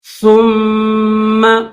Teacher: میم کے اوپر تشدید غنہ کریں گے اور میم کو سختی کے ساتھ اور دبا کر پڑھیں گے